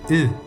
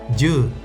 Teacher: Intenta decir una /u/ pero con boca de /i/, sin redondear los labios. Obtienes la vocal /ɯ/, que es como se pronuncia la letra U en japonés (juu) o la que se denota con las letras EU en coreano (hangeul).